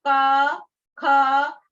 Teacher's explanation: क, ख, तो आपके गले से आवाज आ रही है।